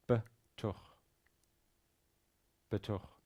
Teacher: it's a lot easier, at least, to say betoch, yeah, with an e sound in between the 2 consonants. Note how the kaf there at the end has a shva in it, betoch. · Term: pronounce the shva